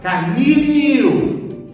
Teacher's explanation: Então a sílaba forte é o nil. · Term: oxítona